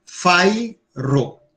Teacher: Então, só são duas sílabas. Fairo. Então, a acentuação fica no fai.